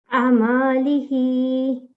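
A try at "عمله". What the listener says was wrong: Now you prolonged it. Unnecessary. Amalihi.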